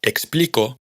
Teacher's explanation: en la palabra explico, la sílaba tónica es pli, mientras que ex y co son átonas